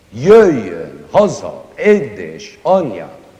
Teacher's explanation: Almost all the words in it are accented on the first syllable.